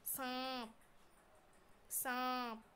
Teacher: ये जो आ है, आ ये सीधा आपके गले से निकल के आता है और ये नाक से बोला जाता है, ऐसा लग रहा है नाक से बोल रहे हैं।